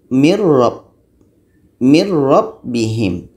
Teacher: Nun hilang, masuk ke roh.